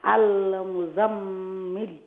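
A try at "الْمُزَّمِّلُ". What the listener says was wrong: Okay, so zaruf shadda se. Al muz. But mimre ghunna korba inshallah.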